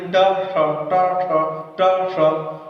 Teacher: ट बोलते वक्त जहां पर जिह्वा टकरा के श बोलेंगे तो वो मूर्धन्य श ही होगा।